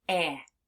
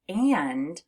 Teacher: when you have a short A and an N, it sounds like it's coming through your nose, which is why when we say the word and, you actually feel a little bit of a buzzing in your nose. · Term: nasalized A